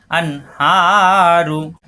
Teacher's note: নুন সাকিনের পরে হা, স্পষ্ট গুণনা হবে না